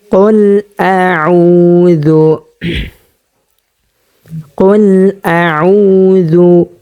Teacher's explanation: আমরা যখন আইন উচ্চারণ করব তখন হরকের মধ্যখানে চলে যাব, হরকের মধ্যখান থেকে আমরা আইন উচ্চারণ করব।